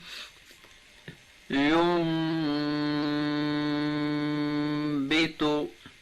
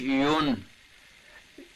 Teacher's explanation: نون ساکن و تنوین کو میم سے بدل کر غنہ کے ساتھ پڑھیں گے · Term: اقلاب